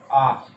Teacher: विवरित स्वर होगा अपना आ, इसमें अपना पूरा मुंह खुलेगा